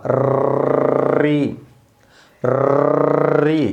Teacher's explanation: तो बराबर री मूर्धा से निकलता है, ट वर्ग भी मूर्धा से निकलता है